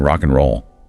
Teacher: and might sound like a quick N sound, like in rock and roll. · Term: weak forms